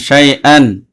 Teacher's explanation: তানবিনের পরে হামজা আসছে, ইজহার হয়েছে, স্পষ্ট করে গুণা ছাড়া পড়তে হবে